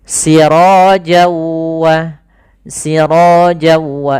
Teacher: Maka apabila ada nun mati atau tanwin bertemu dengan huruf waw setelahnya, yang mana waw termasuk huruf idgham bi gunnah, maka cara membacanya langkah pertamanya awalnya sirojan ketemu dengan waw, tanwinnya awalnya bunyi n. Nah, kemudian ketemu waw maka n-nya hilang, masuk ke waw, jadi waw-nya double.